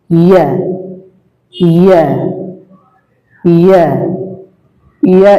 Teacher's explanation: ইয়া হরফটা জিহ্বার মধ্যখান তার বরাবর উপরের তালুর সঙ্গে লাগিয়ে উচ্চারিত হয়। জিহ্বার মধ্যখান তার বরাবর উপরের তালুর সাথে লাগিয়ে উচ্চারিত হয়।